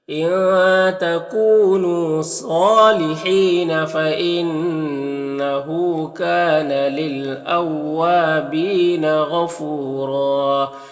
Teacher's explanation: ایک الف کے برابر کھینچیں گے، بی میں یا مدہ ہے، غین حروف مستعلیہ میں سے پر پڑھیں گے ، فو میں واو مدہ ہے اور دو زبر ہے تو